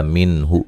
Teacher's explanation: نون ساکن کا اظہار ہے، غنہ نہیں کیا جائے گا